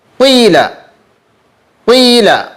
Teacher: یائے مشممہ بالضم وہ یا جس میں ضمے کی بو دی گئی ہو